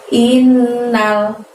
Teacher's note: Ayat yang keenam adalah lafaz innal insana. Innal di situ ada nun tasydid, maka innya harus tahan selama 2 harokat ya, tidak boleh terburu-buru. In baru kemudian nal.